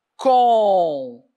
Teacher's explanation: A palavra concluída, ela é uma paroxítona, porque a penúltima sílaba dela é a tônica.